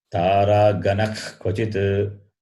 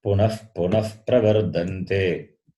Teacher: One is the throat clearing sound, other one is F sound that Visarga takes, depending on what follows. If the following letter is Ka or Kha, then the throat clearing sound.